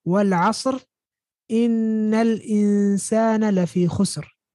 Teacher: I pronounced the last letter with a sukun. Or you can say, I didn't pronounce the kasra. Or you can say, I didn't pronounce the tanween.